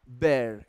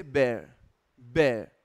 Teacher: जो र ध्वनि है ये यूके में दे ड्रॉप इट जनरली